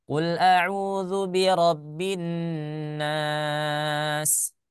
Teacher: Huruf sin memang dia sifatnya rokhoa, mengalir suaranya. Ya, tapi jangan sampai terlalu panjang. Cukup saja, natural saja.